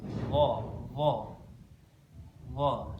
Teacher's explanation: Kemudian yang berikutnya huruf dha. Huruf dha ini makhrajnya ada di ujung lidah bertemu dengan ujung gigi seri.